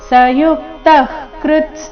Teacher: ವಿಸರ್ಗದ ಉಚ್ಚಾರಣೆ ಅರ್ಧ ಕ ರೀತಿ ಮುಂದಿನ ಶಬ್ದ ಕ ದಿಂದ ಶುರುವಾದ ಕಾರಣ